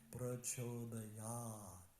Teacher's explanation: And the only long ah is this last syllable.